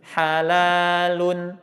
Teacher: Karena nun itu masuk sifat bainnya, ngalir tuh suaranya. Suaranya ngalir sedang.